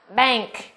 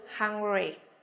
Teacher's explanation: chữ cái n của chúng ta được phát âm là âm ng. Nếu như chữ n đó đứng trước âm k hoặc là âm g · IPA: /ŋ/